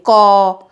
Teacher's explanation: क जब हम बोल रहे हैं तो क के साथ अ का भी साउंड आ रहा है, अ की भी आवाज आ रही है, ध्वनि आ रही है।